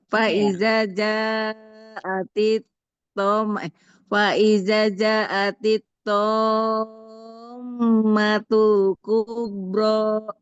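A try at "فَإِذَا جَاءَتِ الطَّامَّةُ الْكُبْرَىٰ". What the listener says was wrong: Jaknya panjang, Bu.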